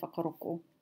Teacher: in Ngaitahu, they dropped the NG sound and pronounce the K